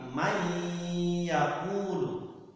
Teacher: Jadi langsung dimasukkan nunnya ke dalam ya, maka idgham itu artinya memasukkan.